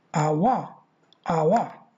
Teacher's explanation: a careful pronunciation of the word our begins with a vowel, a quality similar to a, goes on to a glide towards the back close rounded area, for which we use the symbol u, short vowel u, then ends with a mid-central vowel schwa.